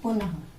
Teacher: इसका उच्चारण जो है वो स्वर के साथ हा के समान होता है। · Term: विसर्ग